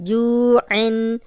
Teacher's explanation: جزم والی واو پیچھے جیم پہ پیش، تو اس کو 2 حرکات لمبا کریں گے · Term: واو مدہ